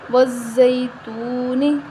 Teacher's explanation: واو زا زبر وز، زا یا زبر زئی، وزئی، تا واپش تو، وزیتو، نون زیر نی، وزیتونی۔ یا لین ہے، اس کو ہم بغیر کھینچے نرمی کے ساتھ پڑھیں گے، واو مدہ ہے، یہاں اس کو واو سے پہلے، واو ساکن سے پہلے پیش ہے تو ہم اس کو ایک الف کے برابر لمبا کریں گے، وزیتونی، اور حرکت کو لمبا نہیں کریں گے، وزیتونی، ٹھیک ہے؟